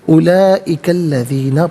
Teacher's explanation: اسے الذین کے لام کے ساتھ ملائیں گے، درمیان میں سے الف حمزہ کو حذف کریں گے